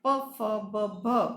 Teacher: ફેફસામાંથી બહાર આવતી હવા આ બધી જ જગ્યાએ થઈને મુખમાં આવે અને હોઠ પાસે એનો અવરોધ થાય